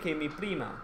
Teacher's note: when the r is just one r in the middle of a word then it's more like the d in daddy